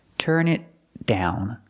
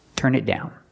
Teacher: The T in it is a stop T. Turn it down. Link it to the next word. Turn it down.